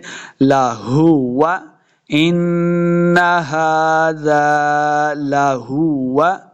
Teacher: हाज़ा लहुवा। लाहुवा हा को हलक के निचले वाले हिस्से से अदा करना है, यानी सीना की तरफ से।